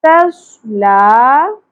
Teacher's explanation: ला खड़ी ज़बर एक अलिफ के बराबर खींचना है